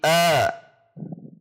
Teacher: Fathah dibaca dengan terbuka sedikit dari posisi kasrah